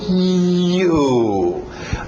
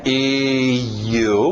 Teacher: Não é I, U. É só U, do céu da boca para fora. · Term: semivogal